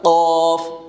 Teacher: یہ اوپر کا جو تالو ہے جب زبان کی جڑ کے ساتھ لگ رہا ہے تو اس سے قوف ادا ہو رہا ہے